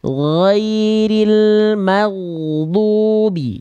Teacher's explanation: Huruf ghoin dilafalkan dari ujung tenggorokan, dia mengalirkan suara, ya, jangan terhenti.